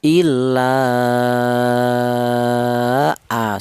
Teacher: Itu namanya mad itu yang namanya munfasil ya. Adapun panjangnya ini yaitu dua alif setengah atau lima harakat illa a seperti itu. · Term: mad jaiz munfasil